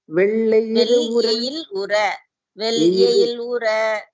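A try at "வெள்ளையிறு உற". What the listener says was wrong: எயில் இல்ல எயிறு practice that la pronunciation and la.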